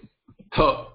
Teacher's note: Mahaprana means a more breathing has to be done, the more aspiration has to be used.